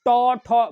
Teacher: ट वर्ग बोलिएगा मूर्धन्य, मूर्धन्य मतलब होता है सबसे पीछे वाला भाग